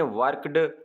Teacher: अगर E डी से पहले वॉइसलेस जो है अल्फ़ाबेट्स आए, जो पी, टी, के, तो फिर आप उसकी आवाज़ टी की निकालेंगे। जैसे देखें वर्कड, तो वर्कड, यहाँ पे डी टी की सी आवाज़ निकल रही है।